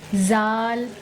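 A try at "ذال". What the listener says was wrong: Very good.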